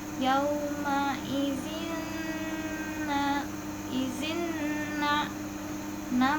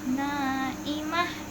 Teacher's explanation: na mat tobi'i karena ada alif sebelumnya fathah jadi mat tobi'i dibacanya 2 harokat.